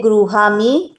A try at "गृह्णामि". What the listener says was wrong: गृहा में नहीं, न न न आएगा ना, गृहणामि।